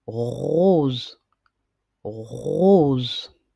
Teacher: Vous mettez votre main sur votre gorge et vous et vous vous entraînez à prononcer le son re et vous allez remarquer aussi qu'il y a une vibration qui vient du fond de la gorge. Donc vous allez sentir une vibration au niveau des cordes vocales quand vous allez prononcer le son re